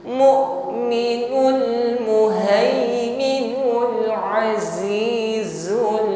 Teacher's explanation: pada pengucapan huruf zai ini tampakkan sofir, ya, desisnya. Azizul ba tasydid syiddah, tertahan ketika menekan hurufnya.